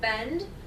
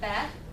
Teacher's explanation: The cluster is being deleted and the final consonants are being deleted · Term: total cluster deletion